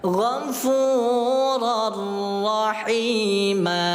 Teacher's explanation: Tanwin kasrah, tanwin fathah dimasukkan ke dalam huruf ra tanpa dengung. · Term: Idgham bila gunnah